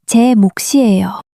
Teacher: when mook meets a vowel, the second consonant siot shifts over and becomes a strong siot sound. So, che mook is pronounced as che mook si ieyo. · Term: strong s sound